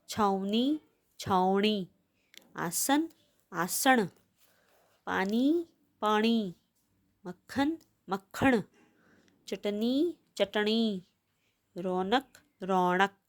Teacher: ਨੰਨਾ ਜਿਹੜਾ ਆਪਾਂ ਲਿਖਦੇ ਹਾਂ ਉਹਦੀ ਥਾਂ ਅਣ ਦੀ ਆਵਾਜ਼ ਆਉਂਦੀ ਹੈ।